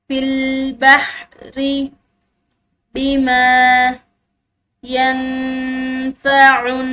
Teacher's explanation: نون ساکن ہے اور اس کے بعد فا حروف اخفا میں سے ہے، تو یہاں پر ہم نے اخفا کرنا ہے